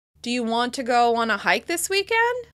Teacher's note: if we're asking a yes/no question, the steep rise at the end signals that the other person can respond. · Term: rising intonation